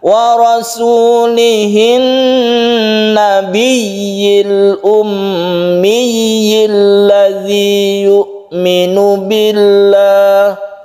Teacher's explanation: Nah, berikutnya yang perlu kita perhatikan yaitu yang ada di bawahnya ini, yaitu an-nabiyil ummi. Di sini ada tasydid nun, tasydid mim yang dia itu gunnah, kemudian diikuti oleh tasydid ya. Tasydid ya yang tidak gunnah. Jadi ini kita tahan nunnya, kita tahan mimnya ini juga, kemudian kita bertasydid ya, dan tasydidnya itu harus jelas, ya-nya juga harus terbaca jelas kasrohnya.